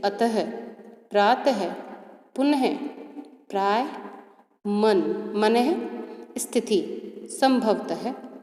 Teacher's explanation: इनका उच्चारण हल्के से ह शब्द की भांति होता है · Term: विसर्ग